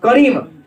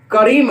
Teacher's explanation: तो सीधा लगा, री पर जोर पड़ा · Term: बलाघात